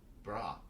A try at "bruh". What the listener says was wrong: Bruh. Shorten it. You had to shorten it, but shorten it. Bruh. Bruh.